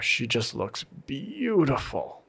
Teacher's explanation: That really long, hard stress on the beautiful helps indicate what is my key sentence.